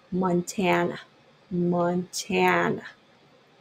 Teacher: ちょっと tan の方にストレスを置くので、man, man はやっぱり開けすぎない方がいいんですね